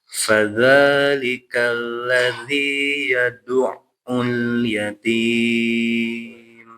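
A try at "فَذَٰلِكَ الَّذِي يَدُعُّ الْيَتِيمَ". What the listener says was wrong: Jadi ain dia alirkan juga. Ya, yadu'u hakata karena dia ainnya tasydid. Yadu'ul yatim. Jangan sampai terputus yadu'ul tapi yadu'ul yatim.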